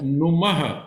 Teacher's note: तो सर, नुमः, ह शब्द का नुमः है, विसर्ग है ना, तो उसका जो उच्चारण है वो ह होता है